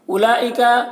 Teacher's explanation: لام میں مد متصل ہے، اسے 3 4 الف کے برابر کھینچیں گے